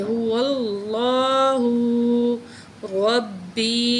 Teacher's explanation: تو یہاں اللہ کے نام سے پہلے واو کے اوپر زبر ہے تو اللہ کو ہم موٹا کر کے پڑھیں گے، هو اللہ ربی را کو موٹا کر کے پڑھیں گے، اور با کے اوپر تشدید ہے تو اس کو ہم سختی سے پڑھیں گے. یا ساکن اس سے پہلے زیر حروف مدہ میں سے ہے تو ایک الف کے برابر کھینچ کے پڑھیں گے.